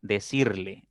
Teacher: la mayor fuerza está en la segunda sílaba contando derecha izquierda y no debo colocarle tilde porque es una grave que termine · El verbo decir unido al pronombre átono le, decirle, lo mismo. La mayor fuerza está en la segunda sílaba contando derecha e izquierda